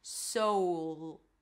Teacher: So you have that back dark deep voice quality, sound quality to it. · Here we start with an S sound, then it's the O as in go, so, and a dark L at the end.